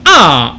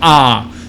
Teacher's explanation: it's very bright it's just above your hard palate which is the part of your mouth where you have all